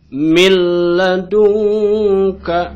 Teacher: Jadi milladunka cukup ditekan saja tanpa harus ditahan. · Nah, jadi bacanya tanpa didengungkan, tanpa ditahan lagi ke hidung, gitu ya. Cukup ditekan saja, gitu ya. Cukup ditekan tapi tidak ditahan. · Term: idgham bilagunah